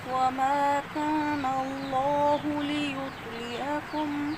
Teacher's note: عین گلے کے درمیان سے ادا کریں گے